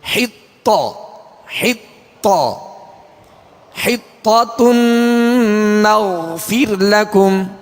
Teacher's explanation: حطة، طا کو کھینچیں گے نہیں کیونکہ اس کے اوپر صرف زبر ہے، آواز اور منہ کھول کر زبر ادا کریں گے، اور طا کو پر کریں گے مگر بغیر ہونٹ گول کیے